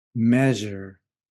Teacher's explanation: It's very similar to j sound, but the big difference is there's no sudden burst of air. Instead, there's a very smooth release of air, and it sounds like j. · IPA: ʒ